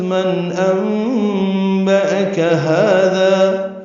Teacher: نون ساکن کے بعد حمزہ آنے کی وجہ سے اظہار ہے